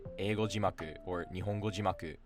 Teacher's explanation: Like I used to constantly make the mistake of saying jimaku as jimaku, because when you say eigo jimaku or nihongo jimaku, it actually drops after ji